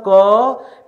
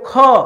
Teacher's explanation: ख हवा ज्यादा निकला महाप्राण